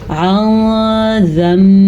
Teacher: ला युस्अलु अन ज़म्बिही, यहाँ पे नून साकिन के बाद जाल हुरूफ इख्फा में से आया है, तो हमने नून साकिन की आवाज़ को छुपाया है और गुन्ना भी किया है